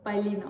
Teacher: Sadəcə olaraq bu sözdə vuruğu ikiyə düşdüyünə görə bəzən şagirdlər bu sözdə uzanma olduğunu zən edir. Ancaq burda i uzun tələffüz olunmur. Sadəcə vurğulu tələffüz olunur.